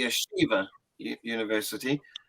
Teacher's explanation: the American stress on the second syllable